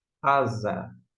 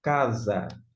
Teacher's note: O S em grego tem sempre um som fraquinho, de sa, sé, si, sol, su. Já na língua portuguesa, S entre vogais tem som de Z, como na palavra asa, ou ainda casa.